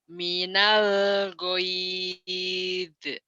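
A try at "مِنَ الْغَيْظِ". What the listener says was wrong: Jangan diekan. Minal goyuz goyuz goyuz. Jangan diekan ya, bukan huruf qalqalah kan. Minal goyuz goyuz zo goyuz goyuz.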